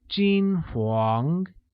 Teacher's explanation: Golden or blonde translates as 金黄, which is pronounced with a high level tone on I and a mid-rising tone on A